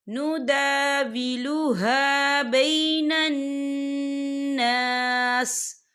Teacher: یہاں نون مشدد ہے تو یہاں پر غنہ ہوگا، اور یہاں پر الف مدہ بھی ہو رہا ہے، خال الف سے پہلے زبر ہے تو ہم اسے 2 یا 3 حرکت کے برابر کھینچیں گے۔